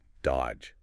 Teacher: You don't say that middle D at all. It's just dodge. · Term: silent